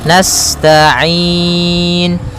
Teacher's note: pada lafal ain ada bacaan mad arid disukun, yaitu boleh memanjangkannya 2 harokat, 4 harokat ataupun 6 harokat. · sifat sinnya sempurnakan dengan mengalirkan nafasnya